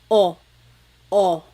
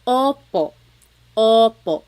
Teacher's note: Sometimes I think of it like having a ball in your mouth. Your tongue gets kind of pushed back and down a little bit and the inside of your mouth is open and wide. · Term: letter O